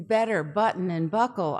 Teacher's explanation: the last syllables in better button and buckle are what we call syllabic consonants you can't hear a separate vowel in what we articulate and